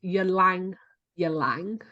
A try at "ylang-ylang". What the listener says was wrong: No, the Y is silent.